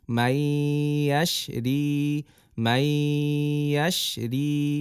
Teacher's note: নুন সাকিনের আগের হরফ নুন সাকিনের পরের হরফের সাথে মিলছে